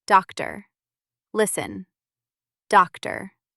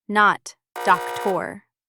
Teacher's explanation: Sometimes the letter O becomes a quiet /ə/. This happens in many longer words, especially at the end.